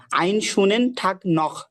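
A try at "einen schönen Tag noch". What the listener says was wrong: very good,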